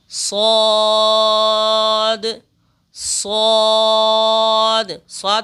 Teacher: स्वाद इस हर्फ को भी पुर पढ़ेंगे